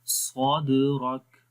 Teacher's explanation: کریں کیونکہ دباؤ محسوس ہوتا ہے صد، پھر کلکلا ہوگا، اور کاف کے اوپر دیکھیں جب رکیں گے تو اس وقت کیا ہو جائے گا، شدت بھی ہوگی اور ہمس کی صفت بھی آ جائے گی